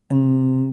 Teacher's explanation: berdengung atau samar. Karena kita tanpa sadar menahan suara di rongga hidung. Jadi kedengarannya kayak ng gitu loh.